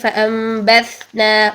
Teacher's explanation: کیونکہ شدت کے اپوزٹ رخوت ہے تو ظاہری بات ہے اگر ایک کوالٹی آپ نے پیئر کی ادا نہیں کی تو دوسری کوالٹی اپوزٹ کوالٹی آٹومیٹکلی اس میں آ جائے گی. تو تا میں اگر ہم شدت کو ختم کرتے ہیں تو اس میں رخوت پیدا ہو جائے گی